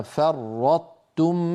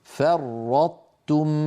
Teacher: على يمين اللوحه ادغام الطائف التاء ادغاما ناقصا يكون ذلك بان يطبق المتكلم لسانه على طاء غير مقلقله ثم يجافيه عن تاء متحركه